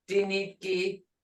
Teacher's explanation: The Muskogee D is unaspirated, sounding to English speakers as though it's halfway between a T and a D.